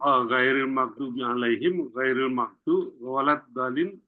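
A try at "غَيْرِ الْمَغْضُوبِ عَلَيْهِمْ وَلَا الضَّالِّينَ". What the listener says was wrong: Jangan diulang maghdub lagi. Ghairil maghdubi alaihim.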